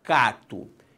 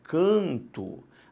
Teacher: na verdade o som é diferente por uma nasalização e não pela entrada de um novo fonema